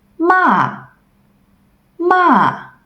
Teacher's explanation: It's falling all the way down, so it's also named as falling tone. We can also name it I stepped on a Lego sound.